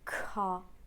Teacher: that k is energetic and aspirated. So make sure you have a very clear plosion for k. And then you leave a little out breath after it.